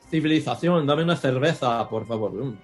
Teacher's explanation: they pronounce their C's and Z's with the Castilian TH sound